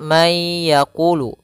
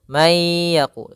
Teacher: Kalau idgham artinya dia memasukkan suara nunnya dimasukkan ke huruf setelahnya. Kalau izhar suara nunnya dibaca dengan jelas.